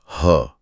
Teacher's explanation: जब ह बोला जाता है तो फेफड़ों से बहुत सारी हवा बाहर आती है। इसलिए यह महाप्राण है।